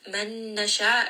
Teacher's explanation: Man nasha, again idgham with ghunna. Noon sakin followed by the letter noon, part of yarmalun, part of yanmu, so idgham with ghunna, merge them together.